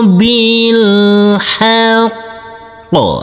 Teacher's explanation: Huruf qaf karena bertasydid dan kita wakafkan di sini, maka huruf qaf harus kita tekan, kita tahan dulu, baru kita pantulkan